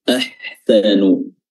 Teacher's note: huruf ha-nya di sini kita ketemu lagi huruf ha di wasatul halq, tenggorokan bagian tengah.